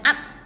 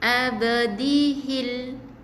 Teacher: Jadi kita baca dengan qalqalah, pantulan ataupun detakan yang ringan saja, bukan up.